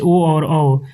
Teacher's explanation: कंठोष्ठ वर्ण कंठ और होठों के मेल से बोले जाते हैं